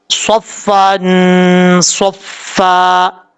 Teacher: صاد حروف مستعلیٰ میں سے ہے، پر پڑھا جائے گا